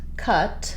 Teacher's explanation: the U by itself just says the stressed schwa, the central vowel